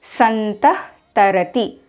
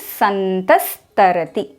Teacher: If after visarga there is t, th or s sound, then the visarga becomes s. For example, santah tarati, when read together becomes santas tarati. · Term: sakara